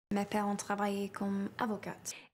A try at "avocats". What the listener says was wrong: Et ensuite, elle a dit « avocate » au lieu de « avocat ». Dans le mot « avocat », le T est muet et le S du pluriel aussi. Donc on va dire simplement « avocat ». Si on dit « avocate », alors on parle d'une femme avocate au féminin.